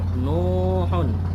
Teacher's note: Contohnya nuhun. Nu-nya dibaca panjang karena di sini ada waw mati. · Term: mat tabi'i